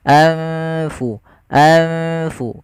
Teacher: nunnya disamarkan ke huruf Fa nunnya disamarkan ke huruf Fa jangan diganti ya jangan jangan anfusakum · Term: ikhfa